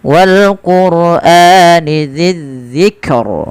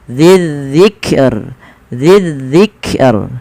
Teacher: ro-nya dibaca dengan tipis